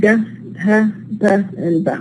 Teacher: All these are minus strident because they are not produced with the kind of turbulence and the hissing sound.